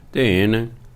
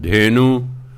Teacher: ਗੁਰਬਾਣੀ ਦੇ ਨਿਯਮ ਅਨੁਸਾਰ ਨੰਨੇ ਨੂੰ ਔਂਕੜ ਨਹੀਂ ਬੋਲਦਾ, ਇਸ ਲਈ ਆਪਾਂ ਪੜ੍ਹਨਾ ਧੇਨ।